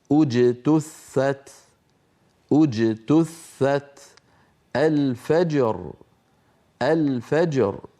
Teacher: الصوت خلف وسط اللسان في باء انحبس الصوت خلف الشفتين الان ينحبس الصوت خلف وسط اللسان ثم ينطلق ويهتز الوتران الصوتيان عند نطق الجيم المقلقله